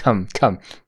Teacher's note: una K plosiva una a corta y una m super nítida